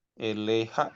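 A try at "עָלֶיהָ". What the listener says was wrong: Bukan el, ini al ya, atas.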